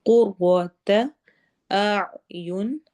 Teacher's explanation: اعین عین حلق کے درمیان سے ادا ہوگا۔